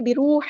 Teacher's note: الحا کو ہم نے مڈل تھروٹ وسطی حلق سے ادا کرنا ہے. حا کو ہم لام کے ساتھ ملا دیں گے.